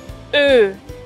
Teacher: la O umlaut se pronuncia formando una O con los labios, pero diciendo E